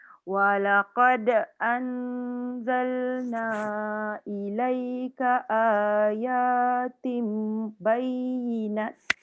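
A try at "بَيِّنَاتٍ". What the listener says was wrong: Bayyinat. Kenapa yang ni kena panjang? Antara nun dengan ta tu ada alif kecil. Nampak tak? Alif tu dikira mat.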